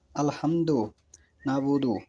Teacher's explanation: ৩ নম্বরে আইন ও হায়ে হুক্তি। এই বর্ণ দুটি হলক বা কণ্ঠনালীর মধ্যস্থল হতে উচ্চারিত হয়।